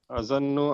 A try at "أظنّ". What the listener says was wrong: Not zannu, zunnu with dhamma.